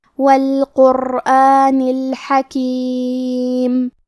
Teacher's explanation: آخری میں حرف النون کے نیچے زیر ہے تو ہمیں زیر کو ظاہر کرنا ہے. کلمت الحکیم میں حا کی ادائیگی حلق کے درمیان والے حصے سے ہے